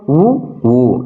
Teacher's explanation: இதழ்களை குவிப்பதால் பிறக்கும் எழுத்துக்கள்